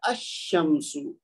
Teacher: اگر کوئی کہے گا نا الشمس تو سمجھ لیں یہ غلط ہے، یہ ہے الشمس. اب لام لکھا ہوا تو ہے لیکن بولا نہیں جا رہا